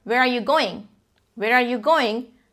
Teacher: When you're asking a question, where are you going? Where are you going? The pitch goes up.